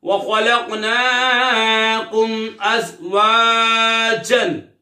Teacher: یہاں پہ میم ساکن کے بعد حمزہ آ رہا ہے تو یہاں پر اظہار شفوی ہوگا، یعنی غنہ نہیں کریں گے